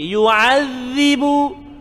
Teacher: Dah kecil, lidah keluar sikit. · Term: zal